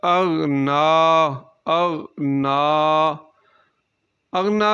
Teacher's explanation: اغنا میں غین کو موٹا پڑھیں گے چونکہ یہ حروف مستعلیہ میں سے ہے جو ہر حال میں پر پڑھا جاتا ہے، تو حروف مستعلیہ · نا جو ہے اس کے اوپر کھڑی زبر ہے نون کے اوپر، تو نا کو ہم ایک الف کے برابر لمبا پڑھیں گے۔